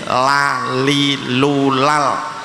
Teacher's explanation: lam itu makhrajnya ujung lidah nempel gusi, jadi tidak terkena gigi